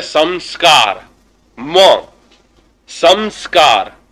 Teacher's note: जहां जो बिंदु आ रहे हैं ना वो अनुस्वार, जो हम स के ऊपर जो अनुस्वार लगा रहे हैं वो अनुस्वार म को साउंड है